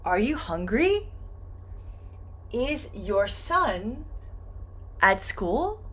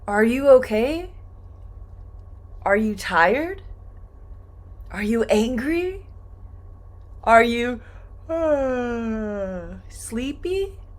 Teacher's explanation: for these yes and no questions – this final sound this final syllable is going to go up.